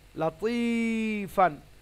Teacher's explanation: তবে দেখুন লাম জবর লা, তয়া আছে তি, লাতি, ফা আলিফ দু জবর ফান, লাতিফান। ত হচ্ছে হুরুফে মুস্তাআলিয়া, সে কারণে সব সময়ের জন্য মোটা করে পড়তে হবে